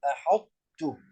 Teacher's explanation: وصفة الحرف الأول الطاء هي صفة الاستعلاء، فتبقى صفة الاستعلاء ويذهب جسم حرف الطاء. لا نقول أحطت ولا نقول أحدت يحذف كاملا إدغاما كاملا، وإنما نأتي بصفة الاستعلاء فنقول أحط وهكذا. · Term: إدغام ناقص